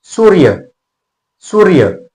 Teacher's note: सु जो आहे ना तो थोडासा लांबतोय पटकन म्हणतो का सूर्य असं म्हणत नाही तर सुहा लांबतोय सूर्य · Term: दीर्घ